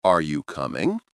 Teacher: When you ask a simple yes or no question like, Are you coming? your voice usually rises at the end. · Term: intonation